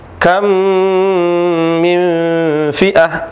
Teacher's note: cara bacanya adalah dibaca seperti Huruf yang kedua saja atau dibaca menjadi satu huruf